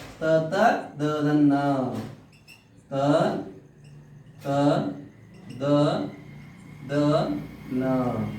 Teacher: ಹಲ್ಲುಗಳ ಸಹಾಯದಿಂದ ಉಚ್ಚರಿಸಲ್ಪಡುವ ಅಕ್ಷರಗಳು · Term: ದಂತ್ಯ ವರ್ಣಗಳು